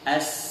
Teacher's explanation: Al-hams yakni mengalirnya nafas atau udara saat mengucapkan huruf hijaiyah. Pita suara tidak bergetar.